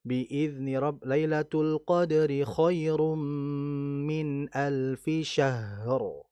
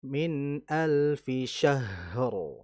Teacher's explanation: Haknya alirkan dulu karena sifatnya adalah rikhwa.